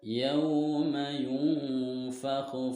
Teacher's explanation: Oh, di sini ada hukum lin, madlin karena huruf wawu di sini huruf wawu sukun didahului oleh huruf ya berharokat fathah dibaca panjangnya 2 harokat